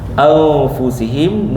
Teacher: Nun bertemu dengan fa ikhfa hakiki. Dengung dua harakat.